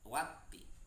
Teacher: alif lam tidak dibaca karena alif lam bertemu dengan ta dan tandanya ada tasdid, makanya dibacanya watti. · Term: alif lam samsiah